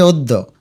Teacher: অদ্য অদ্যর উচ্চারণ অদ্য অদ্য বলি না কিন্তু আমরা বলি অদ্য অর্থাৎ অটা একটু ওর মত উচ্চারণ হয় এটাকে বলে সংবৃত তার মানে অকে ও দিবে এবং দফলাকে দুইবার উচ্চারণ করবে অদ্য